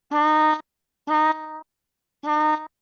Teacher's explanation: Yang kaf tipiskan. Ada hamznya.